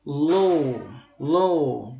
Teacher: AW hərf birləşməyimiz isə uzun O səsini verir.